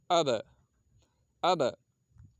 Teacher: ٹکر کھا کے الگ ہو رہی ہے، آواز نکلتے ہی ٹکر کھا کر الگ ہو رہی ہے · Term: قلقلہ